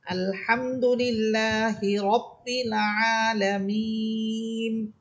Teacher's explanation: এই নুন হরফে আমি থামতেছি, নুন হরফে থামার কারণে যেটা এক আলিফ টান ছিল এখন সেটা তিন আলিফ হয়ে যাইতেছে